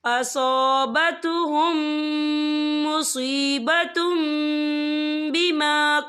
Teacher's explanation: यह देखिए मुसीबतुम, ता के ऊपर तनवीन, तनवीन के बाद जो है बा आ रहा है, तो यहाँ पर इक़लाब होगा यानी तब्दीली होगी। हम तनवीन को जो है मीम के साथ मिलाकर पढ़ेंगे और हम यहाँ गुन्ना भी करेंगे।